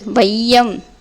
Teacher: ஐகாரம் சொல்லின் முதலில் வரும்போது ஒன்றரை மாத்திரை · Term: ஐகார குருகம்